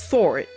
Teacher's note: the R is there as a way to connect vowels together, so that it's not just saw it, so there's not like a hiccup in between, so it's saw it, so it's fluid.